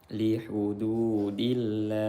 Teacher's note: lam jalalah dibaca tarqiq karena sebelumnya berharokat kasrah